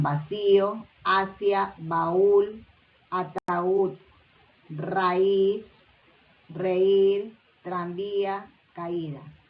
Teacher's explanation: es decir que los días los ciertos asexuales guadix tsonga 2 tienen la mayor fuerza de voz en las vocales cerradas · la mayor fuerza de voz, es decir, la sílaba tónica, recae en las vocales cerradas